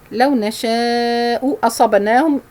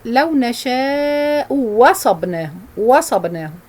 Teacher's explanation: If it has a dhamma, if the first one has dhamma like this one, this means he will change the second hamza into waw, into a waw